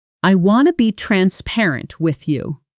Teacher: Now, at natural native speed, notice how want to often collapses into something closer to wanna. and with you blends together so smoothly it almost sounds like one word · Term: natural blending